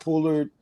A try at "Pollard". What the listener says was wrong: I'm gonna need you to fix his name though. You're gonna have to go back and say his name again. Because you call him Pullard.